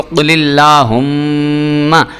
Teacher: اب یہاں پہ چونکہ مشدد تھا، میم پہ کے اوپر شد تھی، اس لیے میں نے اس کو قل اللہم اس طرح کر کے میم کو ہونٹ ملا کے پڑھا تھا